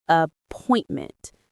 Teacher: The stress is on the second syllable of appointment,